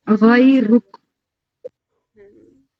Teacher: غیرک میں روا کو پر کریں گے تھوڑا